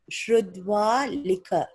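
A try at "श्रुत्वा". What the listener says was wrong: Not dva. Shrutva. Tva.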